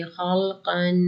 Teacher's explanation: خا اور کاف کو موٹا کریں گے